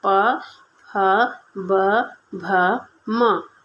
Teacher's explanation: प फ ब भ म तो ये हमारे ओष्ठ से होते हैं। इनका उच्चारण स्थान हम ओष्ठ से करते हैं।